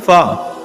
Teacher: ऊपर के दांतों के किनारे और निचले होठ के तर हिस्से से अदा होता है